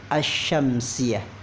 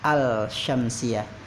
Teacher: penyebutan untuk hukum alif lam syamsiyah, alif lamnya tentu kita tidak baca juga, jadi asy-syamsiyah bukan al-syamsiyah.